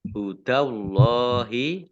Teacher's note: Dal fathah berdiri mat tabi'i. Hudallahi Allahnya dibaca tebal karena harokat di depannya